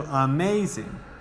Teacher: the emphasized syllable the stressed syllable is on the ma